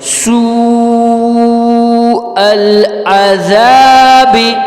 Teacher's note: سو کے بعد جو حمزہ ہے، یہ حمزہ کی آواز نکالیں گے، یہاں سے عین کی آواز نہیں